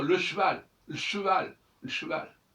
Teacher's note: on a un E après une consonne et il ne doit pas se prononcer, mais c'est la consonne qui doit se prononcer